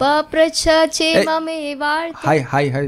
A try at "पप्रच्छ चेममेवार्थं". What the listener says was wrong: High tone नहीं आ रहा, बोलिए।